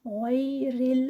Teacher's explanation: غیر المغضوب، غین موٹا ہے. غیر را جو ہے یہاں پر لائٹ پڑھا جائے گا، موٹا نہیں ہے، زیر کے ساتھ آ گیا ہے نا. غین موٹا پڑھا جائے گا.